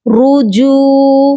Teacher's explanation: اب نیکسٹ والا ورڈ دیکھ لیجئے، یہاں پر آپ دیکھیے رجو نہیں پڑھنا، را کے اوپر بھی پیش ہے اور جیم کے اوپر بھی پیش ہے، تو ہم نے اس کو رو پڑھنا ہے، را نہیں پڑھنا۔ رجو، را پیش رو، جیم واو پیش جو، رجو۔